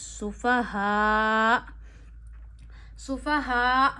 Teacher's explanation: सुफाहा में आपने हमजा साकिन को एंड पे झटका देना है